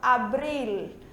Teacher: Geralmente quando a gente fala em português, o nosso L sai com som de U, abril, certo? Em espanhol a gente pronuncia o L, a língua toca no céu da boca